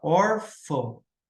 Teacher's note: na palavra órfão, hora que eu separo, o mais forte é o or, e não fão aqui. Então, ou seja, a sílaba tônica está aqui.